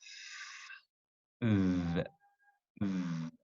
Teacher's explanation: The bottom lip is very close to the upper front teeth. This forms the narrowing, which causes friction. Here it says it's slight friction.